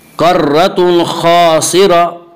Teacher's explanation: खा को पुर पढ़ेंगे, खा हुरूफ मुस्तालिया में से। हुरूफ मुस्तालिया 7 हैं जिनका मजमुआ खुस्सा ज़ग़्त क़िज़ है, जो हमेशा हर हाल में पुर पढ़े जाते हैं।